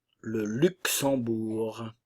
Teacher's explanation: le Luxembourg le Luxembourg le G ne se prononce pas ici nous avons la nasale en et le U français